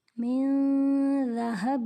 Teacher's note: یہاں پر نون ساکن کے بعد ذال حروف اخفا میں سے ہے، اس لیے یہاں پر اخفا کا قاعدہ ہو رہا ہے